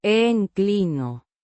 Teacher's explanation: and a slight stress on the second syllable